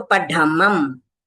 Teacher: फिर पढ़मम, ये ढ ढक्कन वाला है, इसको हमको ढ ड बोलेंगे तो नहीं होता, पर ढ बोलेंगे तो हमारा जीभ तालू को लग के नीचे आता है, तो पढ़मम। अब देखिए जैसे गुरुदेव ने कहा है अंत में अनुस्वार है तो आपका मुंह खुला रहना चाहिए और बोलना है, तो पढ़मंग इस तरह से बोलना है।